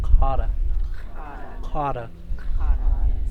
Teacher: there's no friction it's just the stop · your tongue pushes towards the back of your throat and so this one here's kind of easiest if you say